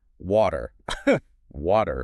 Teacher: It becomes much softer. Your tongue just taps the roof of your mouth very quickly. So it's not a hard stop. Right. It actually sounds much more like a D. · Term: flat T